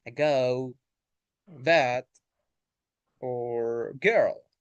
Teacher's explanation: These vowels use the middle of the tongue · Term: central vowels